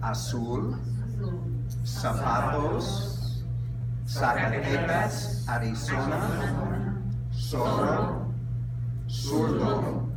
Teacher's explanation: Okay. Finally, the Z is pronounced like S, except in Spain it's like TH